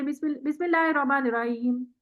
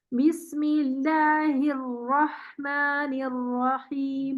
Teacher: را کو تھوڑا سا جماؤ دے کے پڑھیں, کیونکہ جہاں اس میں پہلا را ہے نا جو ساکن ہے اس کو توسط ریکوائرڈ ہے. اگر توسط نہیں دیں گے تو خوبصورتی ہی نہیں آئے گی.